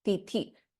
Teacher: the first Ti is Alpaprana. The second one, Tithi, Tha is Mahaprana.